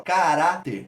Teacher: Como a sílaba tônica é a penúltima, a gente classifica como uma paroxítona